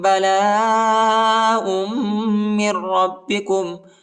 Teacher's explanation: حمزہ کو میم کے ساتھ ملانا ہے، میم کو را کے ساتھ ملانا ہے، اور را کو با کے ساتھ ملانا ہے، اور ادھر جو ہے غنہ بھی کرنا ہے